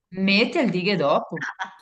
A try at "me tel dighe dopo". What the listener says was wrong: Brava, perfetto.